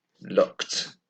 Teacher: we just add t, but no extra syllable. So it's still only one syllable, looked. And the same in this column.